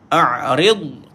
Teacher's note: Ada istitalah pada dad tapi dia bukan qalqalah. A'rid, kuncikan tepi lidah, kuncikan, pergi dekat tepi gigi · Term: huruf dad